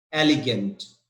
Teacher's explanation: Yes, the stress is on EL, EL. So the stress is number 2, EL.